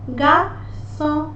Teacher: Letter R is very gentle here.